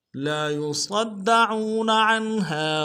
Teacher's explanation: مدہ ہے، لام کے ساتھ ایک الف دال میں کھینچیں گے، صاد کو موٹا کرتے ہوئے دال کے ساتھ ملائیں گے، دال کے اوپر تشدید زور دیں گے ، عین کو واو کے ساتھ ملائیں گے، واو مدہ ایک